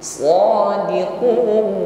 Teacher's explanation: huruf Shad dia juga memiliki bunyi desis yang mengalir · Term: shofir